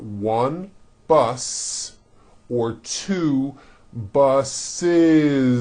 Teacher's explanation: word bus for example bus ends with an S sound bus so if you make it plural you're going to add the ending is with a voiced Z